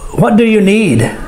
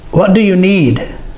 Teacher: the word need is stressed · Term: sentence stress